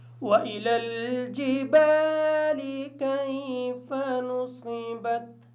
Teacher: جبال کی جو با ہے الف مدہ کی وجہ سے اس با کو تھوڑا سا لمبا کر کے پڑھیں گے.